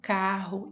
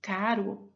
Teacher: Palavras como carro e caro se diferenciam pela oposição entre vibrante múltipla e a vibrante simples, duas possíveis formas de realização do R.